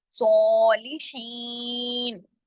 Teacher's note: صاد بھی موٹا پڑھا جائے گا, اور صاد کے اوپر کھڑی زبر ہے تو اس کو الف کے برابر کھینچیں گے بھی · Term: ہیوی